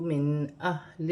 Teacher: نون ساکن میں غنہ نہیں ہوگا کیونکہ آگے حروف حلقی میں سے حمزہ آ رہا ہے